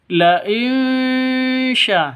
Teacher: samar didengungkan siap-siap ke huruf syinnya · La in syakartum, nun sukun, nun mati bertemu dengan shin. Cara bacanya samar didengungkan, siap-siap ke huruf shinnya